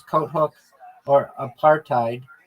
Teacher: And so when we encounter an exception such as coat hook or apartheid, the T is pronounced and the H often dropped in practice